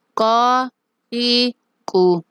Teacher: زبان کی جڑ کوے کے قریب جب نرم تالو سے لگتی ہے تو قاف